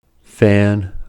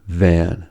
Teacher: Air is pushed out of the mouth between the top teeth and the bottom lip. Fa is unvoiced, and its voiced counterpart is va. So, to say v, add the vibration of the vocal cord to the pronunciation method of f.